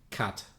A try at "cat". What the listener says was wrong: No, your pronunciation is somewhere in the middle of my cat and cut.